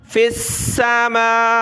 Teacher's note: میم اور واو دونوں کے اوپر کھڑا زبر ہے, دونوں کو ایک ایک الف کی لمٹ میں ہم نے کھینچنا ہے